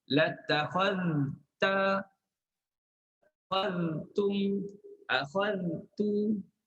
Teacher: Maknanya kita kena sebut jelas huruf zal. Hujung gigi.